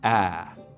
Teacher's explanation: what we call the trap vowel is something like ah right we make it with the tongue cupped down low and towards the front of the mouth